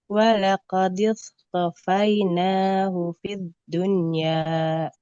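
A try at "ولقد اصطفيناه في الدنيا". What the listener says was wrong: Ya, ini huruf sod, jangan seperti sin, jangan tipis. itu kalau sin. Kalau sod als walaqadis tofainahu fit dunya. Sodanya tebal, to-nya juga tebal.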